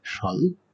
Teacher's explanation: সামনে ১ম এ যদি ব ফলা থাকে তার কোনো উচ্চারণই হয় না